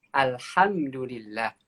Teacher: Pakai huruf H ya. H itu keluar dari mana? Keluar dari tenggorokan bagian tengah ya. Wasatul halqi gitu.